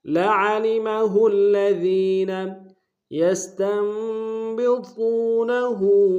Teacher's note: سین کی سیٹی باریک ہوگی · عین کو گہرائی سے ادا کریں گے لعلمہ میں، ہا کو الذین کے لام کے سامنے لائیں گے، شدہ زور دیں گے، ذال کو یا کے سامنے لائیں گے، یہ مدہ ایک اسم میں کھینچیں گے۔